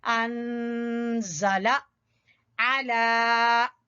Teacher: आइन वस्ते हलक से निकालेंगे और लाम के ऊपर खड़ी जबर है तो इसको लंबा करेंगे